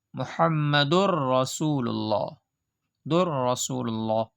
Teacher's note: تو اس کو بلا غنہ کے پڑھا جا رہا ہے، جیسے محمد الرسول اللہ، در رسول اللہ۔